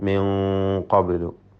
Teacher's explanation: ഖാഫിൻ്റെ മുമ്പിൽ നൂനിൻ്റെ മണിക്കലിൽ തഫ്ഖീം ഉണ്ടാവണം.